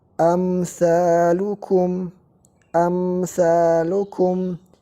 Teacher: cara membacanya tanpa ada tambahan di hunnah di dengungnya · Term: izhar